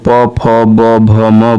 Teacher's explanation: प वर्ग जिसको प, फ, ब, भ, म बोलते हैं और ये ओष्ठ की सहायता से बोला जाता है।